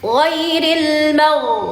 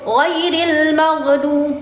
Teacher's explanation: ketika gin itu berharakat sukun maka tidak ada pantulan